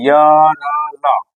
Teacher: तालु से य मूर्धा से र और दंत से ल